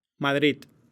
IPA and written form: maˈð̞ɾið̞ (Madrid)